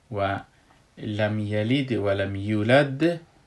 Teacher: و لم یلید و لم یولد دیدین که من دال در آخر قلقله قوی کردم به خاطر که در آخر کلمه در آخر آیت است، از او خاطر ایره من قلقله قوی کردم.